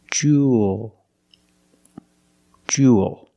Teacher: Make the long ooh sound plus a dark l. The mouth opens a little bit.